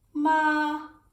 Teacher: and it goes up that's the second tone